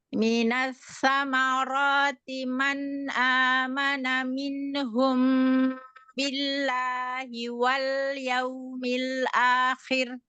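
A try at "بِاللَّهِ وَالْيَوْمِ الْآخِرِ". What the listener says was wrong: Billah wal yaumil jangan ditekan. Jangan ditekan. Billah wal yaumil akhir.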